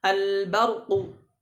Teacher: tidak menebalkan huruf ba